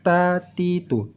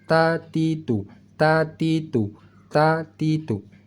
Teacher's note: cara membaca huruf ta dan huruf da, yaitu ujung lidah bertemu dengan belakang gigi seri atas.